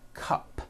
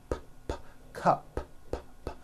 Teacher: It ends with an unvoiced P.